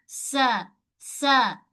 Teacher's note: Okey, untuk makhraj sini, ujung lidah kita ni, kita sentuh belakang gigi kacip bahagian bawah ni. Tempat gigi tumbuh, okey?